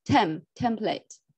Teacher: The stress is on the first syllable, template.